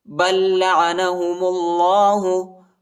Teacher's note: با کو دوسرے والے لام کے ساتھ ملائیں گے